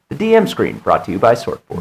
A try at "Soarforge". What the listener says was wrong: Soar. S-O-A-R. Yep, not sword. Soarforge.